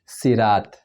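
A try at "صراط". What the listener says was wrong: साद की जगह पर सीन प्रोनाउंस किया जो कि गलत है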